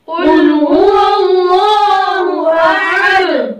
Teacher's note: अब यहाँ पे आहद आहद लंबा करना ये गलत है।